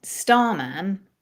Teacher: And if we were going to say the word starman, star's higher. Star is the stress syllable. Starman, star is slightly higher.